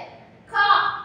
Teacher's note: நாக்கின் முதல் பகுதி மேல் அன்னத்தில் ஒட்டும் போது கா என்னும் எழுத்து பிறக்கிறது